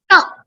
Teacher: So it is a karkasha vyanjana and it's an alpa prana.